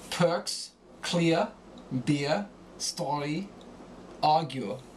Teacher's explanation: Another change that occurs is that R endings become guttural.